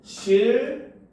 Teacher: 그래서 리을과 니은이 합쳐졌는데 리을 리을로 되죠. 그래서 니은이 리을로 변했기 때문에 이거는 바로 유음으로 변한 현상이다라고 볼 수 있다는 거죠.